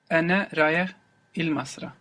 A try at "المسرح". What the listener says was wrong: Masrah. We must hear that breathy H on the end there. Masrah.